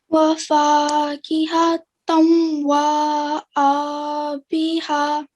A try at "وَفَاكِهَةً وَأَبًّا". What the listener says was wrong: Okay, so we don't want to elongate the waw after we've joined. So we make a nasal sound for 2 seconds in the joining. Tanwa.